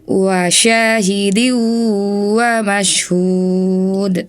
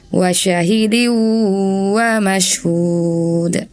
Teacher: 'Syin' seharusnya memiliki panjang dua harakat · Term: Mad